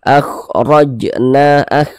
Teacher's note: Di sini tapi yang kita temui harokat fathah, maka huruf ra dibaca tabkhim, baca tebal. Tebalkan huruf ra-nya sehingga pangkal lisan kita naik terangkat ke atas ketika kita mengucapkannya.